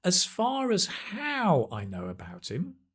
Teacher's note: Or as far as how I know about him, well, d, right? Stress on the how.